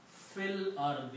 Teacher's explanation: Fi al-ardi, and when you read together, you will pronounce fil ardi. You do not pronounce this alif in between.